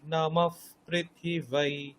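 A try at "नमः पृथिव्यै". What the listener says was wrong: প্রি নয়, প্রি নয়, প্রু। নমঃ পৃথিব্यै। পৃথিব্यै, ব্যৈ। ঠিক আছে, পৃথিব্यै।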